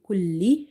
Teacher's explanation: Kulli, this lam is twice, that's why we have to read by emphasizing on the lam. Whenever you see the shadda sign on the letters, try to emphasize while you're reciting them or reading them.